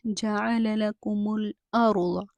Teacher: را کو موٹا پڑھیں گے کیونکہ را ساکن ہے، اس سے پہلے زبر آ رہی ہے۔